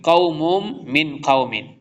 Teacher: تنوین کے بعد میم آ رہا ہے، ادغام یرملون ہو رہا ہے